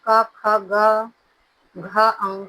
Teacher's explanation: क वर्ग का उच्चारण स्थान होता है कंठ